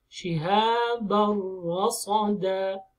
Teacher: here we have ra is without ghunnah just we make it shadda and we move on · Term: إدغام بلا غنة